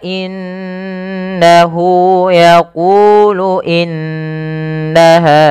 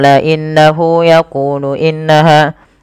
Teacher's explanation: kita baca dengan bacaan gunah dengan cara menahan suara bunyi nunnya dan dimasukkan ke rongga hidung sepanjang dua harakat